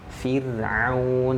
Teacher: Jadi huruf ra sukun ya sebelumnya terdapat huruf yang berharakat kasroh ya. Jadi harus dibaca tipis.